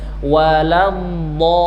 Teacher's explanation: Sisi lidah hafatul lisan naik ke langit-langit ya, ke gigi geraham atas, kemudian selama dia ditahan bunyinya terdorong ke depan. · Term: al-istitalah